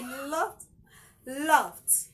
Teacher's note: Don't say laughed. It's not d. It has a T sound at the end.